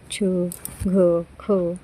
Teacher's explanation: छ, घ, ख ज्यामध्ये हचा वाचताना आभास होतो त्याला म्हणतात महाप्राण वर्ण · महाप्राण वर्ण आहे घ, ज्यामध्ये हचा आपल्याला उच्चार आभास होतो बघा. घ म्हणताना हचा आभास होतो.